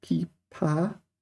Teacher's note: And the instrument pipa is also second tone, second tone.